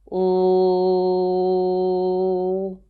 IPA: l